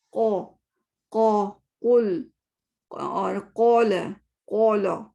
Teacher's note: कौ में round lips कर रही हूँ, यानी कि थोड़ा से गोल कर रही हूँ